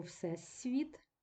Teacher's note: перед наступним пом'якшеним в с теж пом'якшується